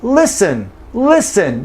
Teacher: never ever does the speaker pronounce the T in listen. Okay, so no T in listen.